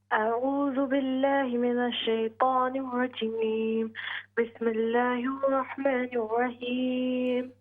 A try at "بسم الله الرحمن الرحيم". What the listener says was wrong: بسم الله الرحمن الرحيم हा को क्लियर कीजिए।